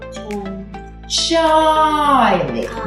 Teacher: Найголосніше чується а. І він у нас перший голосний. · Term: наголос